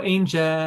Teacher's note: you can actually sing on an L sound, right? It is a voiced consonant. You don't close your mouth like with an M sound, like a hum.